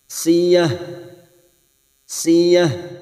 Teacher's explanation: tak marbutah yang dibaca w maka kita bunyikan dengan huruf ha